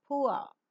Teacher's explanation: the lips are rounded in the beginning and neutral later